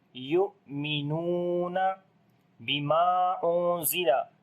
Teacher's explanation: On the hamza we make a shiddat quality, like the discontinuation of our sound.